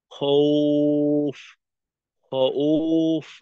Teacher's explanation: মাদ্দে লিন হিসেবে যখন ওয়াও আসবে তখন কিন্তু ওয়াও এর উচ্চারণ ও এর মতো হয় না, তখন হয় দীর্ঘ উ এর মতো। সুতরাং এখানে উচ্চারণটা খৌফ, খৌফ না, উফ, খৌফ, খৌফ।